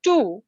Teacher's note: your mouth is going from t to oo sound, therefore your lips are rounded.